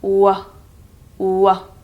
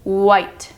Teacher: Just the w, w. And it's like a circular feeling in your mouth. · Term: WH sound